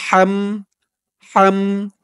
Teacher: হার আওয়াজটা গলার ভেতর থেকে চিকুন হয়ে বের হবে